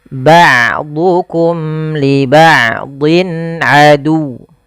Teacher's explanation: Wa qulna bitu ba'dukum, hati-hati dalam hafal ain, jangan ba'dukum, jangan diganti dengan hamzah, jangan ba'dukum, tapi dia ain. Ain memiliki salah satu sifat, yaitu sifat bainiyah, yaitu tidak terlalu ditahan suaranya dan tidak terlalu dialirkan, tapi tengah-tengah.